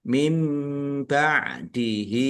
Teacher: nun sukun bertemu dengan huruf ba, bacaan iklab dibaca membalik, nunnya dibaca mim